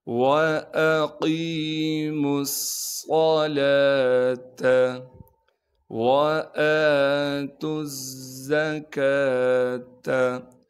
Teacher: یہاں پر بھی واو پر ان تینوں حرفوں پر زبر زیر پیش نہ ہونے کی وجہ سے تا کو ہم ڈائریکٹ زا سے ملا دیں گے۔ زا پر تشدید ہونے کی وجہ سے تھوڑا سا ٹھہراؤ کریں گے۔ کاف پر کڑا زبر ہونے کی وجہ سے کاف کو ایک الف کے مقدار کھینچیں گے۔